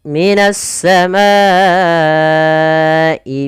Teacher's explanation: ini kita memanjangkan untuk hukum tajwid mad wajib muttasil sepanjang empat harakat atau lima harakat